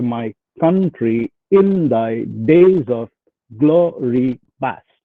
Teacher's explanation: Each foot is of the form unstressed followed by stressed, and hence an iamb